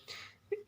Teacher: ਜਿਵੇਂ ਸੀਟੀ ਮਾਰਨ ਲੱਗੇ ਆਪਾਂ ਥੋੜ੍ਹੀ ਜਿਹੀ ਬਾਹਰ ਨੂੰ ਆਵਾਜ਼ ਕੱਢਦੇ ਹਾਂ, ਇਹ ਆਵਾਜ਼ ਆਉਂਦੀ ਹੈ। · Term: ਸੱਸਾ